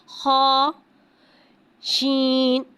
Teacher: شین کو ایک الف یعنی 3 حرکات کے برابر کھینچ کے پڑھیں گے. شین میں توشی والی سیٹی کو ظاہر کر کے پڑھیں گے